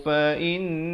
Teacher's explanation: Di sini hukum wajibul gunnah, dengungkan 2 harakat.